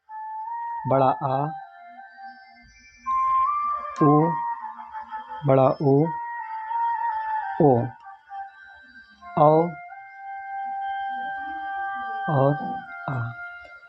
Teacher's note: जिन स्वरों के उच्चारण में जीभ का पश्च भाग सहयोग करता है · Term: पश्च स्वर